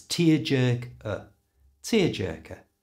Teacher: To pronounce this properly, replace that ER sound at the end with the little schwa sound.